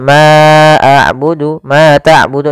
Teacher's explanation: ada bacaan Mad thii yaitu fathah bertemu dengan alif untuk panjang yang kita panjangkan sepanjang dua harakat